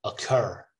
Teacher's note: So the stress is in the second syllable.